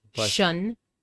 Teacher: which is pronounced with a voiceless sh sound. Shun, and s i o n, which is usually pronounced with a voiced sound.